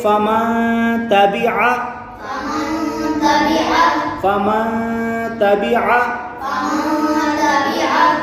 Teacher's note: کے بعد یہاں تا آ رہا ہے حروف اخفا میں سے، نون ساکن کے بعد حروف اخفا میں سے کوئی حرف آئے گا تو وہاں اخفا ہوگا، وہاں گنہ کر کے پڑھیں گے، تو یہاں ہم گنہ کریں گے، یہاں ناک میں آواز جائے گی ، اسے ہم پڑھیں گے فمن تبع فمن تبع فمن تبع